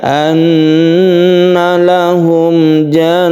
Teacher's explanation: Panjangkan ketika gunnah, nun yang bertasydid ini kita dengungkan